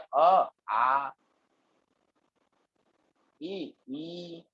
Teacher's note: द्विमात्रिक 2 बार पलक झपका दो उतना समय लगता है, वो 2 सेकंड का, ठीक है ना, द्विमात्रिक है 2 सेकंड, ठीक है ना।